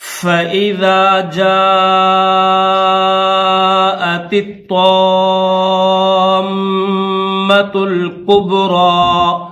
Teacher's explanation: جَاءَتِ الطَّامَّةُ پہلے تا ہے نقطوں والی، پھر یہ طا ہے بغیر نقطوں والی. جو تا نقطوں والی ہے اس کو باریک پڑھیں گے، جو بغیر نقطے والی طا ہے اس کو موٹا کریں گے. تو یہ جو نقطے والی تا ہے اس کو طا کے ساتھ ملائیں گے، پھر طا کو الف مدہ کے ساتھ ملا کر پھر میم کے ساتھ ملائیں گے.